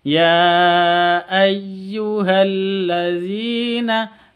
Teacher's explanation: Ini kan beda kata. Jadi bacanya boleh 2 harokat, boleh 4 harokat, boleh 5 sampai 6 harokat karena bacaan mad jaiz munfasil.